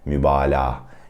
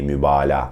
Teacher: Some Turkish learners try to pronounce that soft G, but you would just say mübalağa. You would just make it a long ah sound, okay, mübalağa.